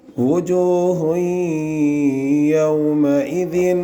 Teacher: ہا کے اوپر دو پیش کی تنوین ہے، اس کے بعد یومین کے 4 حرفوں میں سے یا ہے، اس لیے اس میں ادغام بالغنہ ہوگا